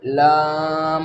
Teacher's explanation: ज़ुबान की नोक का पीछे का हिस्सा जब सामने के दांतों में यानी दांतों के मसूड़ों में लगे तो लाम अदा होता है